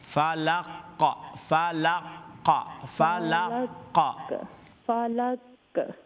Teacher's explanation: قاف یہ فل ماؤتھ ہے، استعلا کی صفت ہے